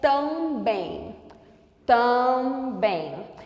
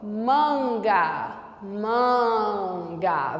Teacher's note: quando eu tenho uma vogal sucedida de M ou N, essa vogal é nasalizada. O som sai pela cavidade nasal. Aqui no caso do A e do M, do A e do N, é como se eu pronunciasse o A com sinal de nasalização, com o tio. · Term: vogal nasalizada